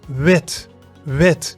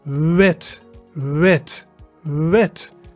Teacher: it is between the English V and W. So hold your upper teeth against your lower lip. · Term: W sound